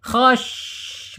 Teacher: shin ini mempunyai sifat tapasyi, tapasyi penyebar, menyebar dia. Khash, menyebar di dalam ya, di dalam lisan kita.